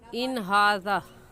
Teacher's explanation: नून साकिन पर हम गुन्ना नहीं करेंगे, क्योंकि नून साकिन के बाद हुरूफ़े हल्की जो कि 6 हैं, हमज़ा हा आइन हा गैन खा, उनमें से हा आ गया है।